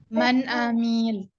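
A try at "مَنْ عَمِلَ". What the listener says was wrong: Disempurnakan dulu ya, huruf ain satu ketukan. Ya, maksud Ana yang mi itu jangan dipanjangkan. Nggak, 2 harokat ya, 1. Karena tidak ada mad di situ.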